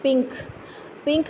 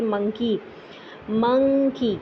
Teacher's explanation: आप एन के लिए अपनी जुबान की नॉक ऊपर तालु से टच नहीं करते लेकिन फिर भी आप एन की आवाज निकाल लेते हैं